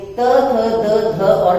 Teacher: त में जीवा दांतों को छूते हुए त, थ, द, ध और न का उच्चारण करती है